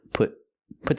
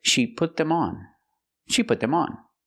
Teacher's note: before a consonant so we use a stop T put put the tongue up and stop the air link the